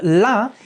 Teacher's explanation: it's like I would say it's almost in between you know it's like in between a dental and a retroflex